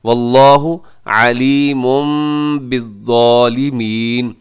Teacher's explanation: اقلاب، اقلاب کا مطلب ہوتا ہے بدلنا، تو یہاں ہم کیا کرتے ہیں، تنوین کو میم کے ساتھ چینج کر کے پڑھتے ہیں